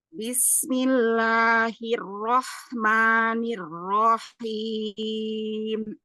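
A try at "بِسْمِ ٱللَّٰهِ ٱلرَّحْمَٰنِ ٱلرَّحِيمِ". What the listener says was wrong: Lam sama mimnya turun lagi. Bismillahirrahmanirrahim. Suaranya masih ini ya, terdengar ke atas. Coba lebar dulu makhrajnya. Bismillahi. La.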